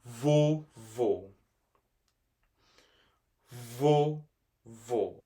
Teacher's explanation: The second O is pronounced with a more closed sound. So that means that there is an accent on top of that O because of that.